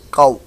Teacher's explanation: یہ واو لین ہے، واو ساکن سے پہلے زبر آ گئی تو واو لین بن گیا، اس کو لمبا نہیں کریں گے ، قو اس طریقے سے نہیں بلکہ قو، صرف اتنی سی